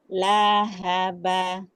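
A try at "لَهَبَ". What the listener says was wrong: Hati-hati hanya panjang. Haba.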